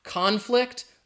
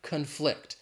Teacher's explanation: if it's a noun, the stress is on that first syllable. If we're talking about the verb, the stress is on the second syllable